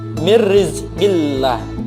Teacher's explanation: lam jalalah dibaca tarqiq atau tipis